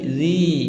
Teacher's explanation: Karena ada kasroh bertemu dengan ya yang disukun. Zi panjangnya 2 harokat. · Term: mad tabi'i